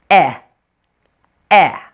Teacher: For the eh, your mouth is a little bit more closed than it was for the short A sound. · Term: short E